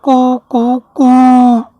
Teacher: इस तरह ये तीनों उ का उच्चारण काल एक मात्रिक, द्विमात्रिक और त्रिमात्रिक हो जाता है